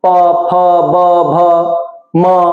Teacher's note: ओठ से बोले जाने वाले प फ ब भ म, ये देखिए सारे ओठ से।